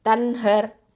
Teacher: இந்த நூன் சாக்கினாக்கு அடுத்ததாக ஹ வந்திருக்குது. அப்போ இங்கே இதுஹாராக தான் ஓதணும். ஓகே, தெளிவாக தான் ஓதணும்.